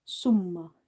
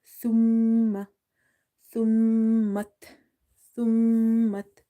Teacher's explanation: this letter tha is from the tip of the tongue when it touches the inner edges of the top two front teeth